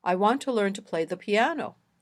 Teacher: in this sentence piano is the last content word so it has the sentence Focus